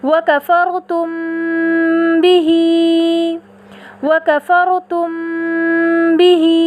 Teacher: دونوں ہونٹوں کے خشکی والے حصے کو بہت نرمی کے ساتھ ملا کر غنے کی صفت کو بقدر 1 الف کے بڑھا کر خیشوم سے ادا کیا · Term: اخفاء شفوی